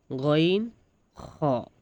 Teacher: হলকের শেষ হইতে গইন খ